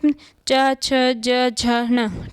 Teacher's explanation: चा वर्ग को स्पर्श संघर्षी व्यंजन कहा जाता है क्योंकि इनका उच्चारण अत्यधिक संघर्ष के घर्षण के साथ किया जाता है